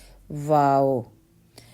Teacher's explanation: واو دونوں ہونٹوں کو گولائی سے ادا ہوتا ہے، گول کرنے سے